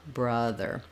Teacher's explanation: for the schwa people will open and be too tense so they would say more like ah rather than a brother